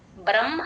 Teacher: హ కింద మ ఎప్పుడు వచ్చినా సరే మ ఫస్ట్ చెప్పి తర్వాత హ చెప్తాను